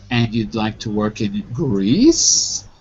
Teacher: the rising tone is marked for you in D, and it only applies to the word Greece